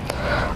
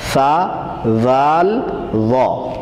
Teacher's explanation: یہ تین حرف ہیں جو زبان سامنے اوپر والے دانتوں کے کناروں سے لگائیں گے تو ادا ہو جائیں گے